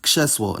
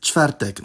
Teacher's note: However, there are two exceptions; the [v] sound and the [ʐ] sound (when spelled rz) can’t control cluster voicing, and will get overridden if there are voiceless obstruents before them in clusters.